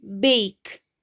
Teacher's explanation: Two vowel sounds are coming which we are pronouncing together. Then comes I. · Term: diphthong